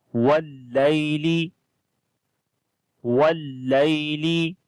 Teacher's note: Here waw we connect with the lam wal, and lay after the lam there is ya leen. Ya is coming with sukun sign on it, and there is fatha on the before letter. This ya we read in soft sound.